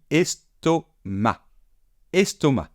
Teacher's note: On ne prononce pas le C final et on dit estomac.